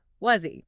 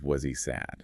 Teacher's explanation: The h vanishes creating that z sound.